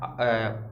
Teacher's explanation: आ जो रहता है, इसमें जो हमारा मुंह का जो द्वार होता है वो पूरा खुला रहता है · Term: विव्रत